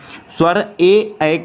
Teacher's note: 17 का जो right answer हो जाएगा वो हो जाएगा कंठ और तालव्य, कहने का मतलब है ए का जो उच्चारण स्थान होगा वो कंठ और तालव्य होगा या तालु होगा, ठीक है।